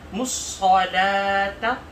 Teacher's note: صلاة کی صاد کو موٹا پڑھیں گے اور تا کو باریک پڑھیں گے